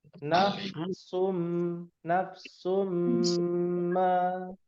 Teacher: Ada mim, ada gunnah musyaddadah. Tuh, ditekan habis-habisan tuh.